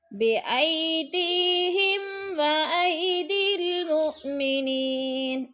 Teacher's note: میم ساکن کے بعد حرف واو آ رہا ہے تو ادھر اظہار شفوی غنہ نہیں کریں گے، لفظ کو ظاہر کر کے پڑھیں گے. جیسے بے ایدیہم و ایدی المؤمنین و ای ادھر جیلین لمبا بھی نہیں کریں گے اور جھٹکا بھی نہیں دینا.